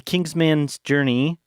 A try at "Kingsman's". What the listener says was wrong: Kingsman's. Like, pronounce it like an E-N and not an A-N. Not Kingsman's. Kingsman's.